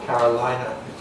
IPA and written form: ˈkærəlaɪnɚ (Carolina)